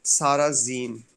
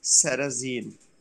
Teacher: But in the actual pronunciation, the first S is pronounced as S, but the second S is pronounced as Z